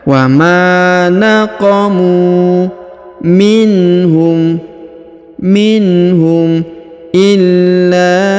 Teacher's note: Wa ma naqamu minhum illa. Huruf lam ditahan dan ditekan karena berharokat tasdid, lalu dipanjangkan 5 harokat karena di atasnya terdapat tanda garis panjang 5 harokat.